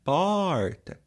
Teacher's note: Quando eu falo porta, o som forte é por